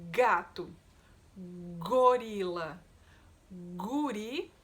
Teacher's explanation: O som é g, g, que é um som linguovelar, igualzinho o som do c. Só que agora a diferença é que g, g, a gente faz o motorzinho na garganta, tá?